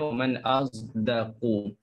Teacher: Uh, dengan zai. Itu campuran suara bunyi huruf sod dengan zai menjadikan satu bunyi huruf za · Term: ismam